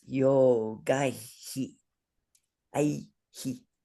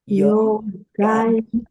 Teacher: you pronounce the after sound, the breath after the h sound, just like the vowel that precedes it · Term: visarga